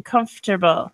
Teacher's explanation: between the F and the T we should have another vowel sound but we're not we don't hear anything